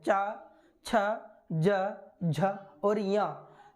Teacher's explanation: स्पर्श तालु को करने के साथ साथ संघर्ष भी पैदा करते हैं, इसलिए चा वर्ग को हम स्पर्श संघर्षी कहते हैं।